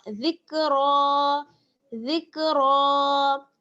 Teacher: زال کو باریک اور را کو موٹا